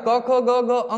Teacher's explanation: क वर्ग को किससे बोला जाता है कंठ से